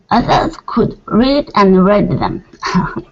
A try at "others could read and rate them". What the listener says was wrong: Okay, and that's going to be rate. Instead of raid them, rate them.